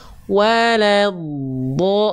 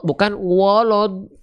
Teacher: Jangan bukan walad, wala. Wawunya tipis, lamnya tipis, dotnya baru tebal. Baru tebal di pada saat masuk dari la ke baru nya tebal, la-nya tipis, wawunya tipis.